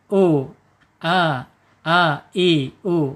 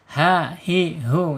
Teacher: Ha dengan a ini makhrajnya ada di bawah tenggorokan. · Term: hamzah